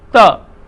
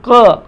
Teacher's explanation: जैसे मैं बोल के दिखाता हूं, त और क, त। आप देख रहे हैं कि क में जीवा का अगला हिस्सा बिल्कुल नहीं उठा। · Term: कंठस्थ ध्वनियाँ